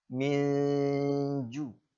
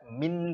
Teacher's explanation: Jadi ikhfa itu artinya samar-samar. Jadi menyamarkan antara bunyi nun mati dengan huruf jim.